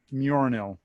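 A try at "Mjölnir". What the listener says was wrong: You put the R in the wrong place, but it's fine.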